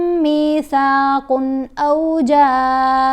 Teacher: میثاقن، قن نہیں پڑھنا کیونکہ تنوین کے بعد حمزہ آ رہا ہے، یہ حروف ہلکی ہے. اب یہاں پر اظہار ہے تو ہم نے تنوین کو جلدی پڑھنا ہے